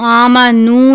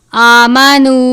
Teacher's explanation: ہم نے اس کو آمنو نہیں پڑھنا، یعنی نون کی آواز کو ناک میں نہیں لے کر جانا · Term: واو مدہ